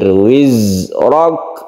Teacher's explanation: Kemudian za ini kadang-kadang saya temukan za itu orang membaca dipantulkan, padahal dia tidak memantul. Dia mempunyai sifat sofir ya, berdesir. Wizrak, roknya ditebalkan karena fathah, kemudian sukun kaf ini adalah hamas.